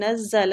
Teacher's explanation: نزل زا سختی اور سیٹی کے ساتھ پڑھا جاتا ہے